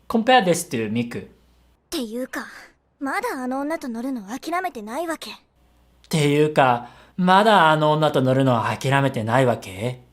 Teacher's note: do you notice there's not much ups and downs in her intonation